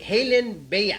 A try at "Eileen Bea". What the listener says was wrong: Eileen Bea. Eileen. No. No H. Eileen.